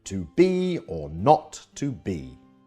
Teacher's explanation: the first syllable is unstressed and the second is stressed as in to be or not to be shakespeare's favorite meter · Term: i am